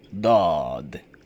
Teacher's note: तो ज़बान का वो हिस्सा जो दाढ़ों के सामने है, वो हिस्सा दाढ़ों से लगेगा, और द मोटा मुंह भर कर अदा होगा, होंठ गोल ना हो, चाहे राइट साइड या लेफ़्ट साइड से।